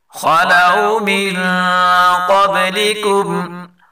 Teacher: خاء اور قاف دونوں کو پر پڑھیں گے